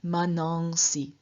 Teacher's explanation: the ah in front of the s lengthened and a nasal inserted giving us manongs and then we find an e added so